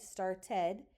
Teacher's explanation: we don't say start to or start D, we have to add the vowel ed on there to make it make flow off our mouth.